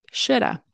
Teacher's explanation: and the L is never pronounced okay we do not pronounce it nope so that's why I